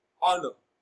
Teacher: honor is a bisyllabic noun and it is stressed on its first syllable as honor